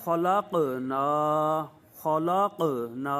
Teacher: چوتھے درجے کا قلقلہ، صرف جزم ہو ساتھ وقف نہ ہو